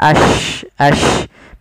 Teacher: Ya, ja, shin, ya itu kan lidahnya, maaf, makhrajnya dari tengah lidah kita. Maka dia sya itu dengan dari tengah lidah kita seperti ada tambahan, ada y-nya gitu ya.